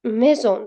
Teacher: Lekin mana shu S harfi ikkita unli o'rtasida kelsa, Z deb talaffuz qilinadi.